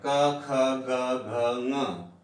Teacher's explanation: क, ख, ग, घ, ङ, इसका उच्चारण होता है कंठ से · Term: कंठ्य